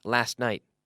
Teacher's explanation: when we speak quickly we often say last night the T gets lost